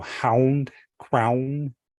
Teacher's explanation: we have the owl. And that's where you go from the O to the U.